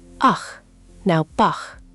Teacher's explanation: It's like clearing your throat very softly, or the ch in the composer's name, Bach. The back of your tongue rises toward the soft part at the back of your mouth. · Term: hard ch